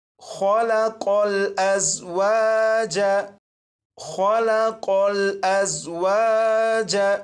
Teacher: خو اور قوف، ان دونوں حروف کو پر یعنی موٹا پڑھیں گے۔